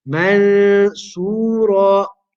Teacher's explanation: We conceal it. We do Ikhfa of the Noon into the Sad.